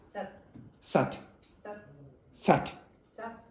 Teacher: you notice I can't even hear the last consonant, but I can guess, I can sort of guess on the speed of that vowel.